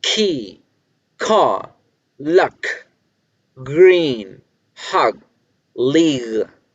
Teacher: la K y la G son sonidos velares